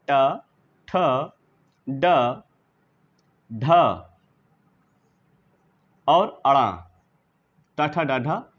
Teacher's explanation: तो मूर्धन्य व्यंजन वे हैं जिनके उच्चारण में हमारी जिह्वा मूर्धा नामक स्थान से ध्वनि संचरित करती है। और ये मूर्धा नामक स्थान जो होता है सबसे कठिन माना जाता है, मुखविवर में काफ़ी पीछे होता है। इसलिए इन ध्वनियों के उच्चारण में थोड़ी सी हमको सावधानी रखनी चाहिए।